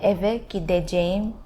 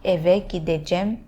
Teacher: You cut down from ceğim become cem.